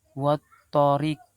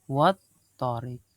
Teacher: Alif lam bertemu dengan huruf to, ya. Jadi cara membacanya itu lam mati dibaca tidak jelas